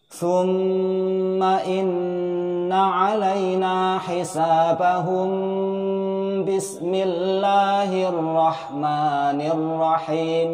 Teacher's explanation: Apabila huruf terakhir di akhir surah berharokat sukun, mim sukun, bertemu dengan ba, maka nanti akan berubah menjadi hukum bacaan ikhfa syafawi, dengung 3 ketukan.